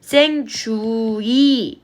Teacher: 왜와 위를 이중모음으로 발음하는 것도 허용한대요